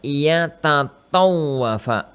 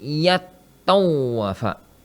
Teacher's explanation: Tapi kemudian antara ta dan ta itu berdekatan makhrajnya. Ta dan ta itu berdekatan makhrajnya, maka dilebur.